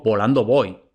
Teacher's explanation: El primer volando, como va detrás de pausa, entonces es B oclusiva. Luego, voy, como no va detrás de pausa, entonces es aproximante.